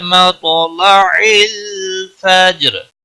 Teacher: را وقف کی صورت میں ساکن ہوگا اور موٹا بھی پڑھا جائے گا۔ را ساکن سے پہلے جزم، اس سے پہلے زبر ہے، اس لیے اس کو موٹا پڑھیں گے۔